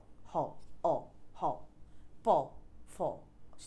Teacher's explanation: প্রত্যেকটা শেষে একটা অ সাউন্ড হচ্ছে